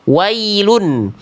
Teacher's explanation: Tempat keluar huruf dari huruf ya adalah keluar dari tengah lidah yang diangkat dan diarahkan sampai menuju ke bagian langit-langit dan tidak menyebar udara. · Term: ya sukun